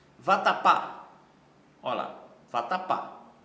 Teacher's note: percebam que a última sílaba é a mais forte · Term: oxítona